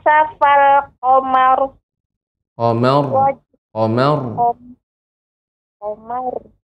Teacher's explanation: agak naik dia jadi dibaca tafkhim